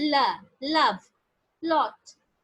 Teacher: the passive articulate as are in firm contact with each other the soft palate is raised the nasal cavity is shut but the sides of the tongue are lowered and is the air escapes along the side of the tongue · is raised and the nasal cavity is shot is shut but from the sides of the tongue the air is escaping and which is why we are being able to produce a lateral sound